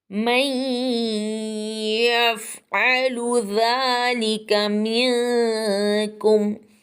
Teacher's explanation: نون ساکن کے بعد یا آ گیا ہے، یا حروف یرملون میں سے ہے اس لیے یہاں پہ ادغام ہوگا، گھننے کے ساتھ ہم گنہ کریں گے